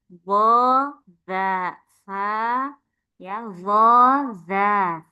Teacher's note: Masuk ke ujung lidah kena ujungnya gigi seri atas